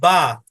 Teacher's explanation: বা উচ্চারণ করার সময় দুই ঠোঁটের ভিজা জায়গা একসাথে করতে হবে।